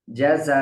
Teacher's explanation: اس الف کے اوپر جو مد ہے اس کو 5 الف کے مقدار میں کھینچ کر پڑھنا ہے